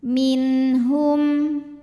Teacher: Karena nun sukun menghadapi ha, maka nun sukun dibaca jelas. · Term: izhar halqi